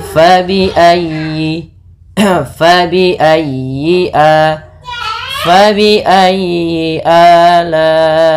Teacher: Kemudian dalam ayyi ditekan huruf ya-nya karena dia tasdid, dan huruf ya termasuk huruf lin yang lembut, di dalam pelafalannya jangan dihentakkan